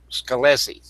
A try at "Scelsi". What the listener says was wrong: Yeah, the C is silent.